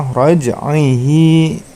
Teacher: hi-nya juga dibaca panjang 2 harokat.